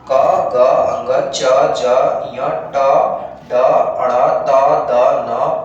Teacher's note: जब इनका उच्चारण करते हैं तो हमारे मुख से जो है वो कम वायु प्रवाह होती है। चाहे इन व्यंजन को बोलेंगे तो ध्वनि की हाहाकार सुनाई नहीं पड़ती है। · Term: अल्पप्राण